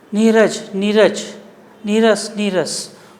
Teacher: विसर्ग का लोप हो जाता है और उसके पहले ह्रस्व स्वर का दीर्घ हो जाता है। ह्रस्व का दीर्घ, ये ह्रस्व यानी छोटा नहीं है तो यहाँ पर आकर वो बड़ा हो गया, इस प्रकार से।